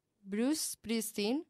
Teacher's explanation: No se vocaliza. Empieza con la S, no la E.